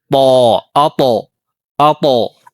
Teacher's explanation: የምላሳችን ጫፍ የጥርሳችን መብቀያ ላይ ከውስጥ በኩል ነው የሚረገጠው ጧ አጦ አጦ በዚህ መልኩ ማለት ነው ወፍራም የሆነ ድምጽ አለው